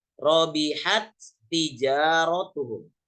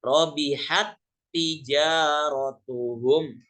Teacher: Karena huruf yang pertama ini, yang ta pertama ini sudah dileburkan ke huruf ta yang kedua sehingga dia dibaca seperti membaca tasydid. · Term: idgham mutamassilain